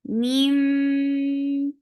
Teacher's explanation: So here you find with tashdid, so you're creating akmal gunna. Meme, keep your sound in your nose for a longer time, and then it is 2 counts long.